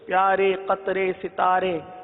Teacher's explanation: امالہ کی راہ کو پڑھیں گے، یعنی ری نہیں بلکہ رے پڑھیں گے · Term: امالہ کبرا